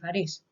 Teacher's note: in Spanish we say Paris and it is stressed on the second syllable